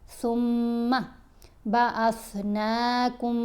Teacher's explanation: میم کا ادغام ہے، میم ساکن نہیں پڑھی جا رہی، میم مشدد پڑھی جا رہی ہے۔ کاف کو ہم نے مشدد میم سے ملانا ہے، اس کے بعد من نہیں پڑھنا۔